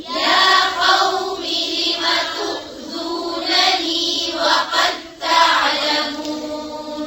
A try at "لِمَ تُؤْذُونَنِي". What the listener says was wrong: لما नहीं है लिमा है. لم تؤذونني.